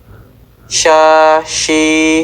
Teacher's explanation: Huruf sya diucapkan dengan cara mengangkat tengah lidah ke langit-langit. Tempat keluar hurufnya itu permukaan atas dari tengah lidah dengan apa yang berlawanan dengan atap mulut.